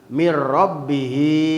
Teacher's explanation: teu make gunah mir rabbihi hi dijabar di jr nangtung namina mad silah qasiroh dipanjangkeun dua harkat da mad silah qasiroh sabab sabadaha domir teu mayunan hamzah jadi